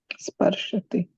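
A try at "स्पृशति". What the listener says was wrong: Generally, we do the mistake of saying Sparshati. It is not Sparshati, it's Sprishati. So Sprishati. So Sprishati.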